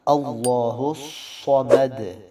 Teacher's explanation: صمد، صاد حروف مستعلیہ میں سے ہے، موٹے حروف میں سے ہے، ان حروف کو موٹا پڑھا جاتا ہے، تو صاد کو موٹا پڑھیں گے اور آواز اس میں کنٹینیو رہے گی، جاری رہے گی۔ اللہ الصمد، دال پہ قلقلہ، صمد صمد، یہ قلقلہ ظاہر کریں گے۔